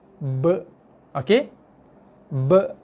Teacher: Dia akan bunyi masihkan bila ba tu berbaris mati, bunyi qalqalahnya ialah kacip bibir, tekan sikit, lepaskan.